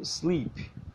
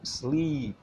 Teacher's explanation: A diferença é que o som agudo do I é bem mais curto neste caso. Ficaria então sleep e não sleep, ok?